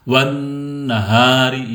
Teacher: Wan na-nya sama dengan hunna, dibaca dengung 2 harokat. Wan nahari, di sini ada mad asli.